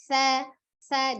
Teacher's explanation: ujung lidahnya ada di ujung gigi seri bagian atas. Sa, dia juga al-hams ya, mengalir ya. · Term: huruf sa